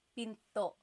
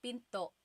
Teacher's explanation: Do you hear the glottal stop when I say pinto?